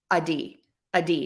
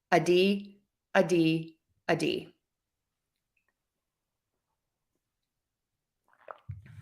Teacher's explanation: So for a D, the tip of your tongue is going to touch typically right where your teeth meet the skin on the roof of your mouth. But when we have the flap T, oftentimes the tongue tip is further back on the roof of the mouth. And then that just helps students kind of touch and go and make that flap T or that D sound super duper quick.